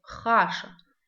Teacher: Хаша, среда, пишется, как слышится, «х» читается тверже, чем в русском языке. Хаша, грубо читается.